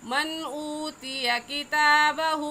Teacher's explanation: मन पर गुन्ना नहीं करेंगे क्योंकि नून साकिन के बाद हुरूफ हल्की में से हमज़ा आ गया, इसलिए इस नून साकिन पर गुन्ना नहीं करेंगे।